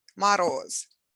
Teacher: stress falls on the second syllable · written as letter o but sounds closer to ah